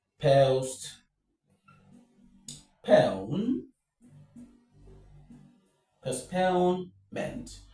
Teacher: So, the stress is on pone.